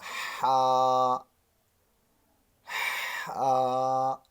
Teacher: ہا آپ کے حلق کے درمیان سے ہا، جیسے سانس نکالتے ہیں آپ